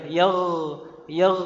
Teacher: gin ini makhrajnya di adnal halq, tenggorokan yang paling atas atau paling dekat. Makhrajnya sama dengan huruf ko.